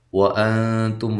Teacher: واو کو ہونٹوں کو گول کرتے ہوئے، یہاں نون ساکنہ کا اخفا ہے، مع الغنہ باریک اخفا ہے. تم تا کو باریک، میم ساکنہ کا اظہار ہے.